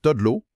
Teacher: dans la vie de tous les jours, on va beaucoup plus y aller avec l'intonation qui monte